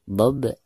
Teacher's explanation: Huruf ba ini adalah merupakan salah satu daripada huruf qalqalah. Dan cara membacanya itu harus dipantulkan dengan suara pantulan yang tipis ya